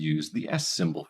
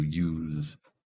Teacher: that is the S sound voiceless use compared to use so the difference between a noun and a verb in this case is whether or not the sound is voiceless or voiced